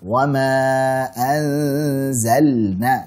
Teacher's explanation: Maka saat ada lam sukun pada fi'il ketemu dengan nun, hati-hati. Harus dibaca jelas. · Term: Idhar